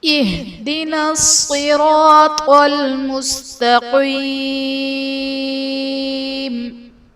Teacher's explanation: صراط میں صاد حرف مستعلیہ ہے، پر پڑھا جائے گا، را پر زبر ہے، را کو بھی پر پڑھیں گے، طا بھی حرف مستعلیہ ہے، اسے بھی ہم پر پڑھیں گے۔